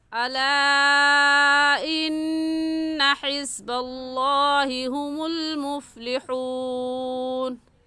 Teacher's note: लफ्ज़ अल्लाह से पहले ज़बर आ गया तो लफ्ज़ अल्लाह को मोटा करके पढ़ेंगे